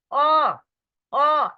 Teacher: অ অ আপনারা আমার সাথে উচ্চারণ করেন নিজে নিজে, ওখানে অ, গলায় কিন্তু আঘাত হানছে। হ্যাঁ, ওই জিহ্বার গোড়া থেকে কিন্তু উচ্চারিত হচ্ছে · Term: কণ্ঠ বা জিহ্বা মূলীয়